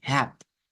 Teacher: la primera sílaba es ahí, hap, y la última sílaba es una I larga